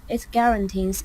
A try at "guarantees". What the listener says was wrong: The word is guarantees. There's no n here. Guarantees, not guaranteeings.